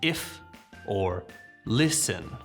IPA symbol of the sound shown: ɪ